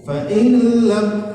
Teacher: nun mati berjumpa dengan lam, idgham bila gunnah, dimasukkan ke huruf lam tapi tidak berdengung. Fa in lam, maka jangan didengungkan di situ. · Fa in lam, maka jangan didengungkan di situ. Fa in lam itu tidak ada dengungnya, tapi sebentar saja.